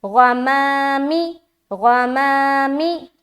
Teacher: ماں کو باریک رکھ رہے لیکن غین کو موٹا پڑھنا ہے